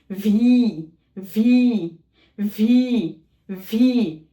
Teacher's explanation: উপরের পাটির দাঁত নিচের ঠোঁটের নরম অংশে লাগিয়ে উচ্চারণ করতে হবে